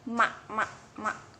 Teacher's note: termasuk huruf nasal yaitu yang keluar dari hidung